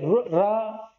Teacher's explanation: रा जो है वो लुंठित वर्ण है, क्योंकि रा जो है इसका मतलब जो रा का हम उच्चारण करते हैं तो हमारी जीभ कैसी होती है? वो आगे से लुढ़कती है।